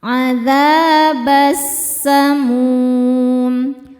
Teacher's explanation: Karena alif lam menghadapi huruf syamsiyah yaitu sin. Maka alif lamnya tidak dibaca masukkan langsung ke sin atau disebut dengan idgham syamsi.